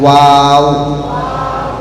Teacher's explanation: दोनों होठों को गोल करना है, उससे वाव निकलता है